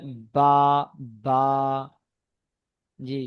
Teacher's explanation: দুই ঠোটের ভিজে অংশ মিলিত হয়ে উচ্চারিত হয় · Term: 16 নাম্বার মাখরাজ